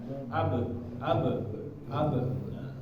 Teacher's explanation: dikasih sepertibihan seperti itu Jadi biasanya tertutup kemudian mengucapkan ba nah huruf ba ini termasuk dari karakternya adalah memantul ya bapak-bapak memantul maka ketika dia sukun dipantulkan